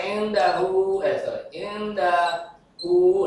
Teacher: Sebelum hak domir, maka ini disebut mad. Dibaca panjang, mad sila qasira.